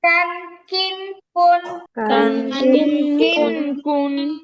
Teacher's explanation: এই কাফ আবার কফের মতো মোটা হবে না, এটা একদম বাংলা কয়ের মতো হবে।